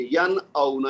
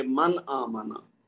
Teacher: یعنی نون کی آواز ظاہر کر کے پڑھیں گے، ین اونا، اس کو لمبا نہیں کریں گے، غنہ نہیں کریں گے۔ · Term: اظہار